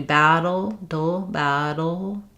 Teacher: It's staying put on both the d and the touch behind the teeth, but the air escapes from the sides. The d or the flap, it's going to touch up in the front spot, and the sides of the tongue are going to be lifted as well.